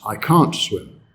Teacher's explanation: The negative is stress, I can't swim. When it's a negative modal like that, we do stress to emphasize what we cannot do.